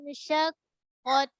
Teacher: Tahan suara dekat huruf qa. Kemudian dekat ta ni baru angin yang berlepas. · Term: hams